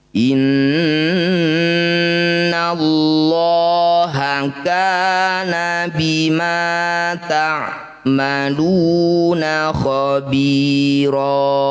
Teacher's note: Mad iwad sama dengan mad tabi'i panjangnya 2 harokat saja. Khabira sama dengan bi dan ro panjangnya sama masing-masing 2 ketukan atau 2 harokat